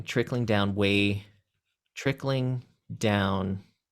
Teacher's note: trickling would be stressed unstressed